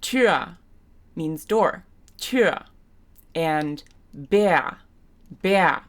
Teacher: So you notice there's an R even in the English, and there's an R in the orthography of the German, but it's a vowel sound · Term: tiefschwa vowel sound